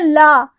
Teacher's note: क्योंकि जब हम ला का उच्चारण करते हैं, आप उच्चारण करके देखिएगा ला, जब ला का उच्चारण करते हैं तो जीभ और दांत के मसूड़े से टकराती है। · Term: पार्श्विक वर्ण